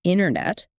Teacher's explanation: the middle but in casual fast talk it's often internet right that middle T sound is either super soft or gone